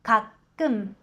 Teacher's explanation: 끔の받침、ミンパッチムは唇をしっかりと閉じて 가끔と発音します。버스를▁탈